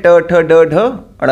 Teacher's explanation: तो मूर्धा से होता है, इसीलिए इनको मूर्धन्य कहते हैं। अब ट वर्ग का उच्चारण स्थान मूर्धा होता है